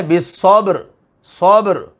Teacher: با ساکنہ آ گئی حروف قلقلہ میں سے، یعنی آواز اس میں حرکت ہوگی، وائبریشن ہوگی